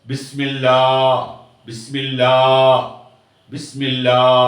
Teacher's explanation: ஒரு அலிஃப் சேர்ந்து அந்த லாம கொஞ்சம் நீட்டுக்கு வைப்போம்